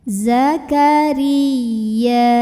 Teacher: Ra-nya dibunyikan secara tarqiq karena kita lihat barisnya kasrah di bawah. Jadi tipis, datar, nyantai lah ya, lidah belakang tidak perlu dinaikkan.